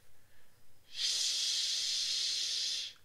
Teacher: this is the voiceless post-alveolar fricative no vibration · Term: esh